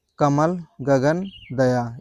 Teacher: इनके उच्चारण से हवा कम निकल रही है आपके मुख से। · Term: अल्प प्राण